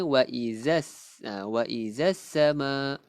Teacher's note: Perkataan as-sama adalah alif lam syamsiah. Alif lam syamsiah kita tidak lafazkan bunyi lam tu kan. So kita akan bacanya wa izas sama.